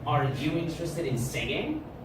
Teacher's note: So I'm not using my pitch down, okay? I'm using it up because this is a yes, no question. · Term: rising intonation